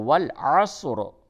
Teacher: جب آپ اس جگہ پہ وقف کریں گے تو والعصر اس را کو آپ پڑ کر کے پڑھیں گے۔ را کے نیچے زیر ہے، جب را کے نیچے زیر ہو تو اس وقت را کو باریک پڑھتے ہیں، اور را کے اوپر زبر اور پیش ہو تو اس وقت اس را کو پڑ کر کے پڑھتے ہیں۔